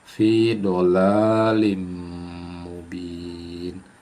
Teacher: Nah, ini tanwin bertemu huruf mim. Jadi, tanwin kasrah bertemu huruf mim. Itu adalah idgham bigunah. Masuk dengan dengung.